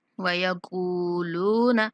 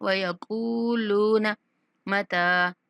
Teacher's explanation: کاف اور لام دونوں کے بعد واو مدہ ہے، دونوں کو ایک برابر کھینچیں گے